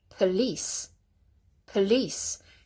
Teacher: with police, the second syllable is emphasized. P, not po or po, but just go p.